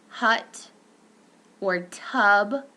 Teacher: The central vowel, this is referred to as a caret, and it occurs in stressed syllables only. It's a central, mid, tense, neutral lip rounding, okay?